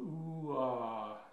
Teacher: you'll hear an oo phoneme, as in boot, oo, and it transitions into an ah phoneme, as in father.